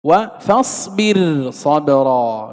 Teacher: وفاصبر صبرا مثلها، أنذر قومك مثلها أيضا، فإن الراء ترقق. ولا يلتفت إلى حرف الاستعلاء لعدم اتصاله بالراء. إذا لا نفخم الراء ونقول وقع بعد الراء حرف استعلاء، لا، الراء ترقق فإن حرف الاستعلاء منفصل لا متصل.